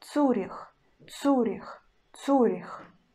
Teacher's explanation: I pronounce у, not ю, and ц still hard. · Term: always hard ц